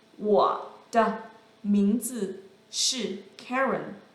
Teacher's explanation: the second word, the, doesn't really have a tone simply because it is acting as a connecting word